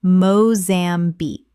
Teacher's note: Three syllables with the stress on the final syllable.